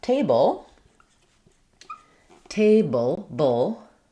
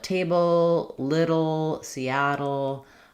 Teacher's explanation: There's no vowel before the L. So the syllabic L sounds like a vowel and a consonant together.